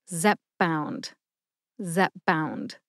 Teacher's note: that emphasis when I say it slowly zpp bound Zep bound it sounds a little bit to me like you soften the p in the first syllable by bringing your lips together